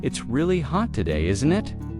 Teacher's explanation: Notice how isn't it can sound like in it in very casual British English.